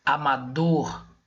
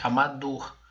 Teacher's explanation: a palavra ou sílaba mais forte de amador é a dor. Pode ver que eu falo ela mais forte, amador, tá ok? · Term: oxítona